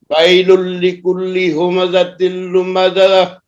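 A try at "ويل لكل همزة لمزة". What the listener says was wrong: ویل لکل ہمزہ، یہ زا کو سخت کریں اور اعتماد سے پڑھیں، جلدی نہیں کریں. ویل لکل ہمزۃ لمزہ.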